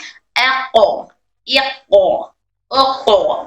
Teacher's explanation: اس میں ایک extra sound ایکو sound اور یہ وہ ایکو ساؤنڈ صفت قلقلہ کی وجہ سے ہے. اس کے اندر ایک صفت قلقلہ پائی جاتی ہے، قلقلہ کی وجہ سے ایکسٹرا ساؤنڈ آ رہا ہے.